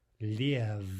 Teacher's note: If we pronounce this without devoicing, it would be liev, right, with the vibration. But liev is incorrect.